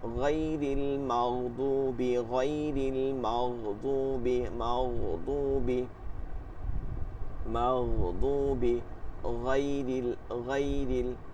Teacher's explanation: 3 নম্বর মাখরাজ হলকের শেষ হইতে গাইন খ